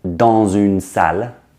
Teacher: For example, if I say dans une salle, the dans with D-A-N-S, the S becomes a Z and it begins the next word, une, dans une salle. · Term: liaison